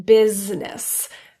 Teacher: And lastly, the I in business. Completely dropped, but very commonly mispronounced.